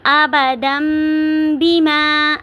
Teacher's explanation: تنوین کو میم میں بدل دیں گے، ابدم بیما، آواز کو تھوڑی دیر ناک میں لے کے جائیں گے، غنہ کریں گے